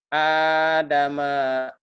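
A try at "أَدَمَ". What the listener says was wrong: Lebay. Oh, kan pendek kita mah. Yang panjang hanya doang. Adama.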